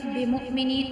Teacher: اور حمزہ ساکنہ پہ جو ہم جھٹکا دے کے پڑھیں گے۔